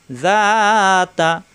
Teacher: জিব্বার আগা দাঁতের আগায় নরম করে